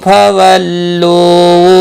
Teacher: فولو لو و مدہ ہے، ایک الف کے برابر کھینچ کر پڑھیں گے